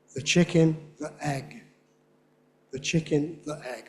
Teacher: Many younger speakers on both sides of the Atlantic, as we say, always pronounce this word as the, but before a vowel, you have to use a glottal stop.